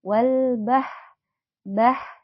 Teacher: huruf ha yang keluar dari pangkal tenggorokan